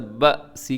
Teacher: وحین البأس اسے با سی نہیں پڑھنا بلکہ جھٹکے کے ساتھ با سی، کیونکہ با زبر حمزہ با، اس میں حمزہ ہے الف نہیں ہے. با سی لکھا ہوا لیکن وقف کریں گے، رموز اوقاف میں سے طا ہے، وقف مطلق کی علامت، یہاں وقف کر لیں.